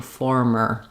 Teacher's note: make sure that when you're saying former or formerly, that this second sound does still have the tight back American R, former. Often people will not be tight enough on that, and it'll sound more like forma or forma instead of former, formerly.